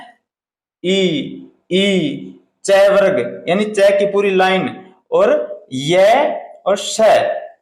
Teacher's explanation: यह तालू से बोले जाते है इसलिए इनका जो उच्चारण स्थान होता है वो होता है तालू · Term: तालव्य